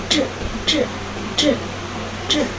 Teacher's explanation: Aliran udara keluar melalui celah sempit, bergesekan menghasilkan bunyi dengan aliran udara yang tidak terlalu kuat atau non-aspirasi.